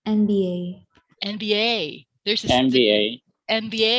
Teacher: they put more stress at the very last letter of the acronym